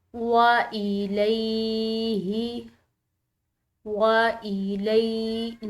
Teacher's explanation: آگے دیکھیں وَإِلَيْهِ، وَإِلَيْهِ، لام کے بعد یا ساکن آ رہی ہے تو ایک الف کی مقدار اس کو کھینچ کر ادا کریں گے